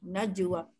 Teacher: kalimah najwa tu kena lantun dengan sugra ataupun dengan ringan. Jadi kita jangan tekan dia seperti kita buat kubra. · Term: Qalqalah surah